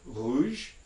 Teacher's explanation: at the beginning of a word before a vowel you'll generally find that this is a voiced uvular fricative